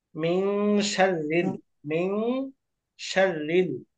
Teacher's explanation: শিন র কাস ফাতহা শার, র লাম কাসরা লিল, শাররিল পাতলা হবে, র বারিক। মিন শাররিল, মিন শাররিল। · এটার মধ্যে এখন ইখফা হাকিকি হবে কারণ পরবর্তীতে শিন আছে এবং এটা মোটা হবে।